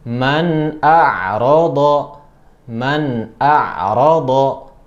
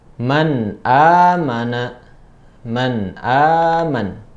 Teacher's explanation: langsung dibaca nun secara jelas. Itu nun ketemu dengan hamzah seperti itu. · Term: izhar halqi